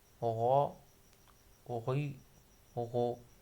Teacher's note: گلے کے اوپر والے حصے سے ادا ہونے والا حروف غین، خا، حرکات کے ساتھ، غین زبر غا۔